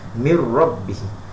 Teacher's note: Jangan miner, bukan miner, mir, masukkan terus huruf ra tu.